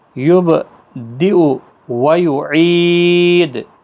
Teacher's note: دال ساکن پر قلقلہ ہوگا وقف کی صورت میں، اور 3 سے 5 الف کے برابر کھینچ کر وقف کریں گے